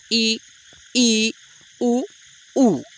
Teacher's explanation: संवृत्त स्वर ऐसे स्वर हैं जिसको उच्चारण करते समय आपका मुख का द्वार जो है सबसे कम खुलता है। · ये 4 संवृत्त स्वर हैं जिसको आप खुद ही बोल के देख लीजिए, आपका जो मुख द्वार है वो बहुत ही कम खुलेगा